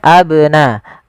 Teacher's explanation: Kemudian lafal abnaakum ada huruf ba, ini banyak berharokat sukun dan dia ba salah satu huruf qalqalah, yang dimana dia harus memantul. Kesalahan membaca qalqalah, pertama tidak mantul, contoh abnaakum.